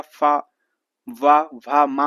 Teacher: फा वा भा मा हो गया, सब किसके होते हैं? ये सब आपके ओष्ठ से होते हैं